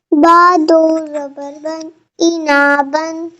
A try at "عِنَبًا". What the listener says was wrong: عنبان، نون کو نہیں کھینچنا، با کو کھینچنا. عنبان، عینا بیٹا، عین کے نیچے زیر ہے، عینا بن.